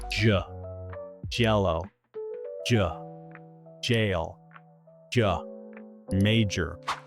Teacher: The English J sound, j, is very different. It starts by blocking the air, similar to a D sound, before releasing with some friction.